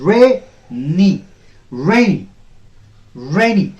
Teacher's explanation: Rainy. Ray has to be a bit louder and stronger, longer, and on a higher pitch. Rainy. The season is very rainy.